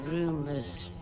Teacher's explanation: R is the sound before s so the sound of plural s is z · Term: plural ending s